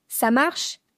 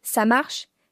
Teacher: ça marche avec une intonation montante, c'est une question